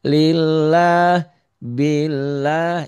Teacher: Nah, ini sekarang yang mendahului lafaz Allahnya baris di bawah jadi tipis.